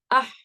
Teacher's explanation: آپ کی آواز بالکل اسٹاپ ہو رہی ہے، کہیں جا کر بلاک ہو جاتی ہے، بند ہو جاتی ہے بالکل. اس کا پریشر، اس کی وائبریشن باہر تک نہیں جاتی ہے. · اس کی آواز بھی اح کر کے آپ کے حلق میں ہی رک رہی ہے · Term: مخرج المقدر